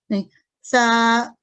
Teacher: زبان کی نوک جب سامنے والے اوپر کے 2 دانتوں سے لگے تو سا کی آواز ادا ہوتی ہے